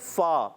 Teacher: فا کا مخرج اوپر والے دانتوں کے کنارے نیچے والے ہونٹ کے تر حصے سے جب لگتے ہیں تو ادا ہوتا ہے